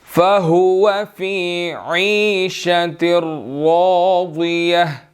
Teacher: اب راضیہ، را بھی موٹا ہے اور آگے ضاد بھی موٹا ہے